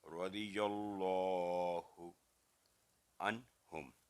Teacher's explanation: نون ساکن کے بعد اگلا حرف ہا ہے جو کہ حروف حلقیہ میں سے ہے، تو یہاں پر نون کی آواز لمبی نہیں کریں گے، غنہ نہیں کریں گے ، اور ہم میم ساکن کی آواز بھی لمبی نہیں ہوگی